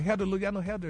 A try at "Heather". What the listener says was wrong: That TH didn't come out right, dog.